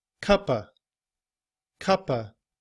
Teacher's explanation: in reduced form, we often leave off the sound of the V and we say and we just use the schwah